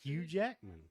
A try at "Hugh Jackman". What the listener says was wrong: It's not Ooh. It's not you. It's Hugh. Hugh. Can you not pronounce the H? Can you not?